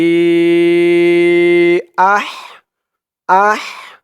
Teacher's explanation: হার উচ্চারণটা গলার ভিতর থেকে চিকুন হয়ে আসবে